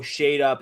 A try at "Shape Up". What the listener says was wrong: Shape Up. Shape Up. You guys are not pronouncing the P. Shape Up. Shape Up.